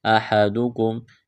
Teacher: دال پیش دو، آیا ودو، دال میں سختی کریں گے، احدکم، ہا ہے گلے کے درمیان سے زور لگا کر ہا کو نکالنا ہے